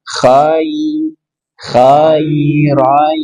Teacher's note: Di sini ada ya sukun sebelumnya fathah. Maka bacaan lin bacaan lembut mengalir tanpa penekanan.